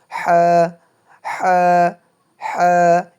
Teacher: গলার ভেতর থেকে বাতাস বের হবে এবং বাতাসের সাথেই উচ্চারণ হবে। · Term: বড় হা